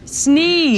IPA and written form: sniːz (Sneeze)